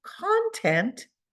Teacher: I emphasize the second syllable